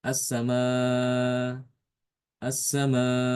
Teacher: tidak ditekan ke makhraj hamzah ya karena seakan-akan Hamzah itu dihilangkan ya walaupun itu tertulis ya tapi tidak tidak dibaca.